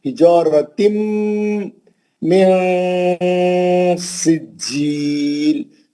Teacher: जीम को सख्ती से पढ़ेंगे, मद्दे आरिस करेंगे. मिला के पढ़ेंगे तो इख्फा होगा.